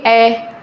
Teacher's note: अर्ध विवृत जिसमें हमारा मुंह आधा खुला हो